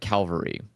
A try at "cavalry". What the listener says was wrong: cavalry? cavalry. You said Calvary. Calvary is the place where